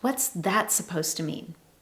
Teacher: Notice my strong emphasis on the word that.